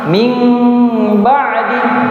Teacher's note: mengubah nun sukun atau tanwin dengan mim dalam Al-Qur'an ketika bertemu dengan huruf ba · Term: iqlab